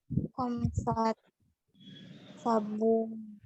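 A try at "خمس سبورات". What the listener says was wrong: Khomsu Khomsu saburotin. Nah, seperti ini ya. Ini pakai waw, kurang waw.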